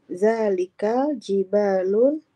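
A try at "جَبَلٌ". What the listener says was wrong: Enggak, bukan jibal ini Bu. Jabalu.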